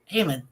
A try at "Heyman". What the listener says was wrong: Bro, you mumbled your words so hard, it didn't even sound like you said Heyman. Literally sounded like you said Henwich.